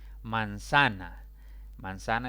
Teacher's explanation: manzana es una palabra de tres sílabas la mayor intensidad recae sobre la penúltima sílaba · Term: palabra grave, palabras graves